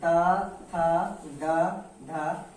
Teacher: इनका उच्चारण जो है दंत की सहायता से होता है